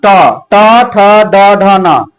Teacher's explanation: ट वर्ग का उच्चारण स्थान ट ट ठ ड ढ न तो मुर्धा होता